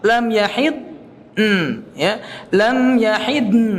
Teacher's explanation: Jadi lidahnya tetap lam yahid, tetap ditempel, tidak dilepas. Lam yahid, ya, lam yahid, nah itu pakai hidung.